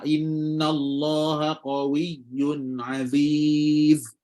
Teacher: bila kita baca huruf Zai ni kita baca Aziz bila berhenti eh nampak macam bunyi ada angin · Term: sirfir